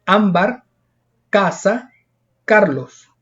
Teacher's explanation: Luego están las palabras graves, que no es que estén enfermas, sino que es que tienen la mayor fuerza de voz en la penúltima sílaba, es decir, antes de la última.